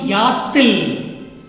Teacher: So I add a T in the middle to avoid the clashing of vowels.